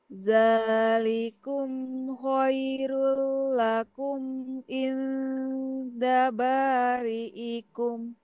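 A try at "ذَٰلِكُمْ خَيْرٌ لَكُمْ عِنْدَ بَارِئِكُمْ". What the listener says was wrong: Ya, sip. Alhamdulillah.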